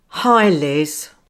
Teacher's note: Now this falling intonation signals something's wrong.